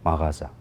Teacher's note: Mağaza vurğu ikinci hecadadır. Amma biz isə ustadlarımızdan öyrənmişik ki, uzun illər ərzində vurğu sonuncu hecada olacaq mağaza sözündə.